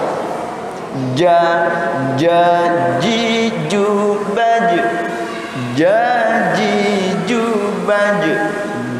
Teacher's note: Huruf syajariyah keluarnya dari tengah lidah. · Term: jim